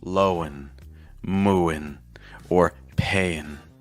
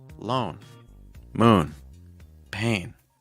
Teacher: You don't need to add an extra vowel sound before the letter N. It's just lone, moon, pain, lone, lowen, moon, mooin, pain, payin.